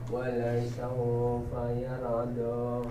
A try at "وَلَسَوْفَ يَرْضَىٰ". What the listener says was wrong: Ya, saunya jangan panjang. Wala saufa yarda.